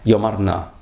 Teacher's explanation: ударение с второго слога Йомар переходит на первый, чтобы не было двух ударений подряд. Такое облегченное ударение, ослабленное. · Йомарна – это обычное произношение, обычное ударение, но из мелодических соображений в псалме лучше сказать йомарна, то есть ударение на, просительная частица на, и тогда ударение, значит, поскольку эти два слова произносятся без паузы, интонационная единица, то ударение с второго слога Йомар переходит на первый, чтобы не было двух ударений подряд